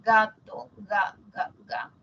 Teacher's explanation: y el Pos dorso cuando nosotros decimos gato ga ga ga el post dorso toca el velo · el postdorso toca el velo, no el ápice, ¿no? Sería loco que la lengua que está acá, la puntita, se vaya hasta acá.